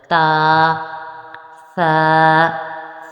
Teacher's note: زبان کی نوک اور اوپر کے دانتوں کے جڑ کے ساتھ اس حرف کو اپنے ادا کرنا ہے